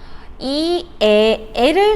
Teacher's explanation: 이, 에, 에를 순서대로 발음을 하다 보면 턱이 점점 아래로 내려가죠. 혀도 같이 아래턱을 따라 내려갑니다.